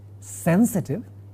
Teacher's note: sa as a alveolar sound or as a dental sound. I'm using both dental and alveolar because sometimes it varies for some people and some varieties of English.